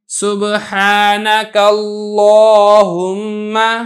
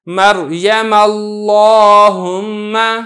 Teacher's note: کا لام تھا، اس سے پہلے کاف پر زبر تھی تو میں نے لفظ اللہ کے لام کو موٹا کر کے یعنی پر کر کے ادا کیا ہے